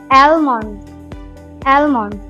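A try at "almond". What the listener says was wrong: সবাই বা কেউ আলমন্ড বলে, দুটোই ভুল। এটা হবে এল এর উচ্চারণ উজ্জ থাকবে, অ্যামেন্ড, অ্যামেন্ড।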